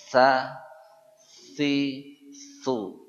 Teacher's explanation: Jadi huruf sa diucapkan ujung lidah nempel di ujung gigi seri atas. Ini gigi atas yang 2.